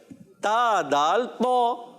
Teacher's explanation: मखरज है ज़बान का सिरा और सामने के दांतों की जड़ें